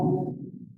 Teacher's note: karena ketemu dengan alif lam, maka ini diwasol, wasol itu disambung, sukunnya hilang, diganti dengan kasroh.